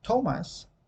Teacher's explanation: The first sound, when you say Thomas, that very first sound, the t, is going to touch the alveolar ridge